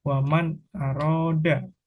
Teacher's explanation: mengucapkan nun sukun atau tanwin dengan jelas sesuai dengan makhraj dan sifatnya yang kedua pengucapan tanpa disertai dengungan dan yang ketiga nun sukun atau tanwin tidak [Musik] dipantulkan untuk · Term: izhar